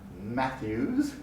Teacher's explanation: When I make the sound as in Matthews, the two lips close completely. No air or voice passes through the mouth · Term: nasals